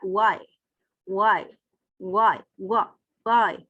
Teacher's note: वाई वाई वाई वाई बोल के देखें, हवा रुक नहीं रही, जैसे वॉवल्स को प्रोड्यूस हो रहे हैं वैसे हैं। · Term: अप्रोक्सीमेट्स